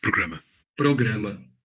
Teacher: between vowels, or after a consonant but before a vowel, it's an alveolar tap in both varieties.